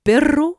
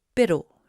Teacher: le cas particulier du R à une seule vibration qu'on appelle r battu et que je représente par une sinusoïde réduite à une seule